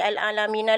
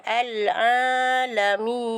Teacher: Okey, jadinya bunyinya tak boleh jadi al-alamina lagi. Dia akan jadi al-alamin. Okey, itulah yang datangnya 6 harakat. Al-alamin. Okey, itu hukumnya adalah mad arid li sukun.